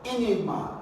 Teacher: Enigma is a special word and it has a stress on the second syllable. Here we're going to have e, and then you have nig, and you have ma.